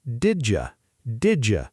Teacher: Did you see that? The D and the Y from you merge together into a J sound.